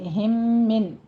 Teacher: ہو رہا ہے 2 کاؤنٹ کرنے ہیں، اور آگے ہم من، یہ بیچ میں میم ساکن کا قاعدہ ادغام شفوی ہو رہا ہے 2 کاؤنٹ کرنے ہیں